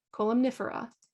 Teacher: we had the MN together it's in the middle of the word so we pronounce both of them